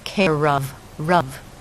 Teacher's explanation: So the sound we're really listening to is the R. That's the strong sound. It will slide over on the of and sound like care of, rov.